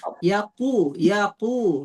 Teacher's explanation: qofnya itu ee ingat dia di pangkal lidah